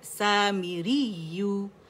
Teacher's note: نبر بھی کریں گے, نبر بھی کر سکتے ہیں. سامریو, یعنی ہم نے آواز کی پچ ریس کرنی پہلی یا کے اوپر